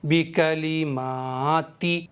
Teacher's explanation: تا پر زیر ہے اس لیے میں نے زیر کو نہیں کھینچا ہے، جلدی پڑھا ہے